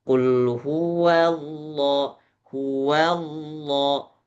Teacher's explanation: Hua bertemu dengan lafaz jalalah itu juga sama pertemuan antara tipis dan tebal. Wnya tipis, lafaz jalalah Allah tebal